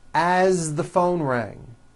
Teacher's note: As, you pronounce it with a voiced Z.